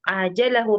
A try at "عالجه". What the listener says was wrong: عالجه ya bukan ajal.